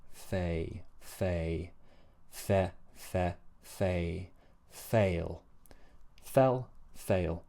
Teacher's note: So the fail vowel is a sliding vowel, it's a diphthong. So we begin with e, and then the tongue slides upwards from e to e, a.